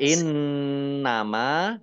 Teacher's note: nunnya dibaca nun tasdid dibaca gunnah atau mendengung ditahan 2 harokat